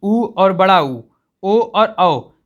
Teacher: 4 ऐसे वर्ड हैं जिनको हम लोग उच्चारण करते समय हमारी मुख की आकृति कैसी हो जाती है, गोल हो जाती है। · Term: वर्तुल स्वर